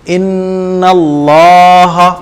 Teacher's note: پیچھے آپ غننے کا قاعدہ پڑھ چکے ہیں کہ نون اور میم پر تشدید ہو تو غنہ ہوتا ہے, تو نون کے اوپر تشدید لگ رہی ہے تو ہم غنہ کر کے پڑھیں گے